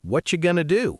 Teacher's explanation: What are you becomes whatcha, and going to becomes gonna.